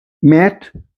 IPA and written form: mæt (mat)